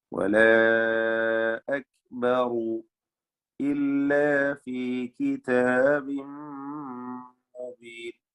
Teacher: റാഇന് തഫ്ഖീം കൊടുക്കണം. അക്ബറു എന്ന് പറയുമ്പോൾ റാഇനെ തഫ്ഖീം ചെയ്ത് തടിപ്പിക്കണം